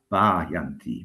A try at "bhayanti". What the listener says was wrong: That was a bit better.